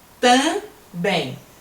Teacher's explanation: Então não aparece o M, mas aparece um som do I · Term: ditongo nasal